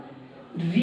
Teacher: री कहां से आया, री जब बोलते हो तो जीभ जो है वो कंपन करती है, इसलिए मूर्धा। अभी हमने थोड़ी देर पहले बताया, जब भी जीभ कंपन करे तो मूर्धा, ठीक है।